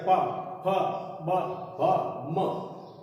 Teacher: हवा बाहर निकलते ही ओठ टकरा जाते हैं, आपस में भिड़ जाते हैं। प फ ब भ म, ये पांचों ही ओष्ठ के कहलाते हैं।